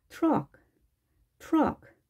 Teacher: 자, 그런데 R 발음의 특성, 유성음이잖아요. 유성음의 특성 때문에 트가 약화 현상이 좀 일어납니다. 그래서 두 소리가 융화되는 느낌으로 발음이 되는데요.